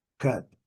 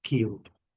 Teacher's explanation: o som bem curto do U, cub, e o som bem longo do U, cube